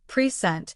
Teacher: But when the stress is on the second syllable present, it means to give something formally.